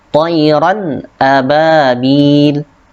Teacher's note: Di sini yang terdapat yaitu tanwin. Tanwin fathah bertemu dengan hamzah sehingga dibacanya jelas.